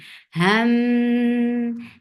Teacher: This gunna is akmal, so keep the sound in your nose for a longer time